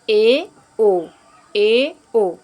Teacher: ई उ से ज़्यादा, मतलब मुंह हमने थोड़ा सा ज़्यादा खोला, इसलिए ये अर्ध संवृत हुए